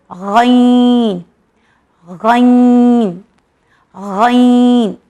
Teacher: ये heavy letter है जो हमारे हलक के फर्स्ट पार्ट से निकलता है